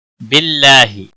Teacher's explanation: باللہ، اللہ کے لام کے پچھلے حرف کے نیچے زیر ہے، اس لیے اللہ کا لام باریک پڑھا جائے گا۔ اس کے اوپر کھڑی زبر ہے، ایک الف کے برابر کھینچ کر پڑھیں گے، ہی کو کھینچنا نہیں۔